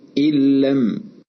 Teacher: إدغام النون الساكنة في اللام تم بدون غنة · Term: إدغام بغير غنة